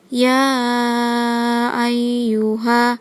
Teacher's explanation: munfasil Alasannya karena huruf mad bertemu Hamzah di lain kata dipanjat dibaca panjang 2 sampai 6 harakat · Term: Mad Jaiz munfasil